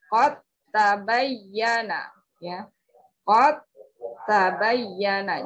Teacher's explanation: Jadi dal yang memiliki salah satu sifatnya adalah qalqalah. Ketika sukun maka tidak dibaca qalqalahnya, tidak terdengar karena dal dileburkan ke huruf ta.